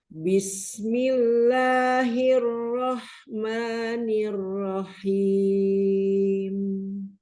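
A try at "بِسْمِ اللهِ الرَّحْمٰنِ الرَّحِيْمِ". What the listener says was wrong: Roh, haknya kan tidak bertasydid. Bismillahirrahmanirrahim. Rahim, jangan nyerempet haknya.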